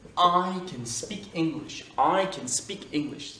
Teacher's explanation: Et le can, il est inaccentué.